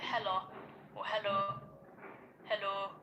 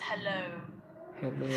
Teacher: It needs to be a very gradual O, Hello. quite relaxed O. And it's also not a single sound. It's not oh.